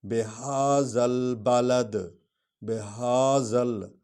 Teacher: ہا کو سینہ سے نکالیں گے